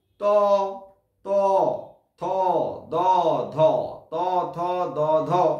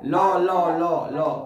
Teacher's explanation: ত থ দ ধ এগুলো দাঁতে লাগছে, লটা মাড়িতে লাগছে